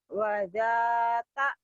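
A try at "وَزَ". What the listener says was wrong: Masih ada keras dikit.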